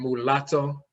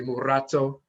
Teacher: saying mulatto there's no letter l not khan we say murato the rolling r is used for the l